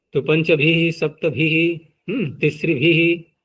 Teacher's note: तो देखो सब में उपोत्तम उदात्त है, अंत से पहला वाला।